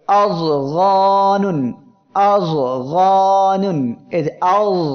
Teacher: তারপরে আযগানুন, আযগানুন, এই যে আয, এই যে যদ অক্ষরটি উচ্চারণের সময় জিহ্বার মধ্যখান উপরে লাগতেছে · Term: ইতবাক